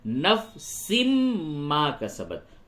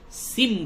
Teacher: سن میں جو نون کی آواز نکل رہی ہے اس کو میم سے بدلیں گے، سن نہ بول کے سم بولیں گے، سم. اور غنہ بھی کریں گے تو نفس ما کسبت. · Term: ادغام مع الغنہ